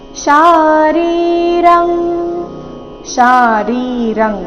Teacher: ಶಾ ಮತ್ತೆ ರಿ ಎರಡು ದೀರ್ಘ ಬರಬೇಕು. ಶಾರೀರಂ ಅನುಸ್ವಾರದ ಉಚ್ಚಾರಣೆ ಕ ವರ್ಗದ ಅನುನಾಸಿಕ ಂಗ ರೀತಿ.